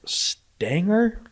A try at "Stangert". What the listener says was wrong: Stangert. Some people don't pronounce the T, like Voldemort. But I've always pronounced the T, so I say Stangert and I say Voldemort.